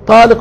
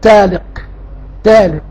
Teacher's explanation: كانت زمان يعني بعض الفئات تنطق الطاء تاء